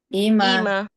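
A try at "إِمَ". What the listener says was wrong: Jangan sisakan suara ima. Putus saja. Ima. Nah, nanti ketika kita bertemu dengan lafaz yang ada mim kemudian bertemu dengan mim bertasydid, simpelnya anggap saja mim yang sukun itu tidak ada. Jadi langsung saja loncat ke yang bertasydid.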